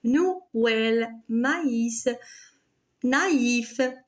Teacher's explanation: Alors là, on a deux voyelles qui succèdent et le tréma s'installe sur la deuxième voyelle pour montrer que la deuxième voyelle se prononce séparément de la première